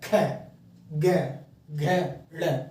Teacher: कै वर्ग को कंठ्य, यानी हमारे कंठ से आवाज आएगी, गले से